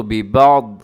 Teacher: یہاں پہ ببعض ہے لیکن آپ نے آگے چھوٹا سا جیم لکھا ہوا ہے جس کا مطلب ہوتا ہے وقف جائز، یہاں پر آپ رک سکتے ہیں. ببعض کو جب رکیں گے تو ببعض ایسے پڑھیں گے، یعنی آخر کو ضاد کو ساکن کر دیں گے